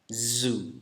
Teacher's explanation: ada bunyi z, bunyi yang bergetar pita suara kita.